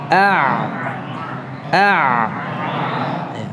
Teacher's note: ikuti ya ah ah seperti ngejan gitu ya tapi ngerjainnya berbeda Ah suara itu masih mengalir beda dengan Hamzah kalau Hamzah kan macet macet kan karena pita suaranya tertutup kalau Invita suaranya masih membuka ah jadi memungkinkan suara itu masih